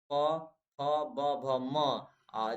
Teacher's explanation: देखिए, बोलिए प, देखिए आपका दोनों ओठ सट रहा है, प। जब आप प बोलेंगे, आप फ बोलेंगे, आपका दोनों ओठ सटेगा।